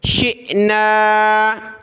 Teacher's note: حمزہ ساکنہ جھٹکے کے ساتھ پڑھیں گے